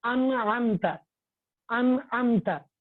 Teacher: جو نون ساکن کی جو آواز ہے اس کو بالکل ظاہر کر کے پڑھیں گے